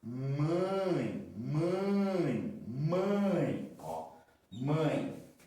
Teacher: E as vogais nazais, né? O som sai ali um pouquinho pelo nariz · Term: vogais nasais